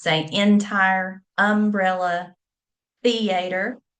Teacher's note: The shift of the accent to the front of the word, you'll hear people, particularly older generations, say entire, umbrella, theater instead of theater.